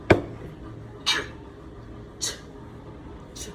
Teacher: The j is a voiced consonant, which means your vocal cords vibrate.